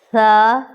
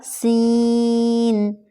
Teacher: ثا میں سیٹی کی آواز نہیں آنی چاہیے لیکن سین میں ہے۔ اگر آپ سیٹی کا خیال نہیں رکھیں گے تو دونوں لیٹرز سیم ہو جائیں گے۔